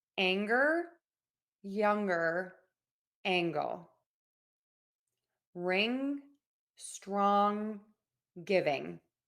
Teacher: The tip of your tongue is low in your mouth and the back of the tongue is pulled high up. So you have and the air is moving out of your nose.